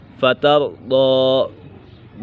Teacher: با مشدد ہے اور یہ با حرف قلقلہ میں سے بھی ہے، اسے جماؤں کے ساتھ پڑھیں گے۔ فترضی ضاد یہ حرف مستعلیہ میں سے ہے، اسے بھی پر کر کے پڑھیں گے